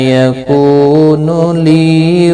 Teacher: ان نون مشدد پر گنہ ہوگا. یکون کو واو مدہ ہے، لی یا مدہ ہے، دونوں کو ایک ایک الف کی مقدار کے برابر کھینچ کر پڑھیں گے